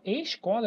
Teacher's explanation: escola, eu pronuncio o tanto s quanto c. Então, não é dígrafo.